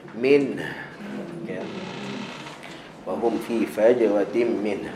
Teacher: Dan huruf terakhir kat situ min, ada ha simpul, yang mana ha simpul ni dia ada hams, dia ada angin keluar, maka keluarkan angin.